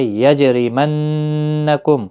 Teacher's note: جیم ساکن پر قلقلہ ہوگا، نون مشدد پر غنہ ہوگا، میم ساکن کے بعد شین آئے، اظہار شفوی ہوگا۔